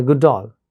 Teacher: we have assimilation of these two sounds, the last sound of the first word and the initial sound of the second word